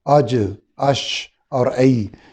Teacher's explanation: اس کے بعد اگلا مخرج تھا زبان کا درمیان جو گول والا حصہ ہے، چوڑا حصہ ہے، وہ اور اس کے برابر کا تالو، یعنی اوپر کے جبڑے کی جو چھت ہے، یہاں سے تین حروف ادا ہوتے ہیں، جیم شین یا، اج، اش اور ای۔ جیم میں قلقلہ ہے، باقی تینوں حروف باریک ہیں۔ شین کو ادا کرتے ہوئے آواز پورے منہ میں پھیل جاتی ہے، اور ای کہ میں نے عرض کیا تھا کہ جب یا کو ساکن کر کے پہلے زبر لگائیں گے تو اس یا کو، یا ساکن سے پہلے جب زبر ہو تو اسے یا لین کہتے ہیں۔